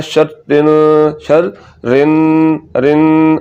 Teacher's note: تو اس لفظ میں جو غلطی ہوتی ہے وہ یہ ہے کہ ایک تو آپ نے نون مشدد ہے، یہاں پر غنہ کرنا ہے، شر رن شر رن رن، آواز کو ناک میں لے جا کے لمبا کرنا ہے